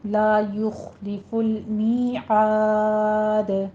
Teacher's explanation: آخر پہ دال ساکن ہو جائے گا، وقف بالاسکان کر رہے ہیں تو یہاں پہ دال ساکن ہوگا، یہاں پہ ہمارا قلقلہ ہو جائے گا اس کے اوپر